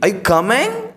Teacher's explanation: Now, record, they both have different meaning as per their intonation. Intonation rise at the end of the questions usually.